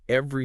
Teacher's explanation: We completely drop that middle e.